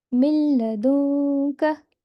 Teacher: Noon sakin is completely ignored.